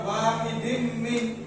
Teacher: Cara membacanya yaitu dengan memasukkan harokat kasroh tanwin dan disertai dengung selama 3 harokat. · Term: idgham bi gunna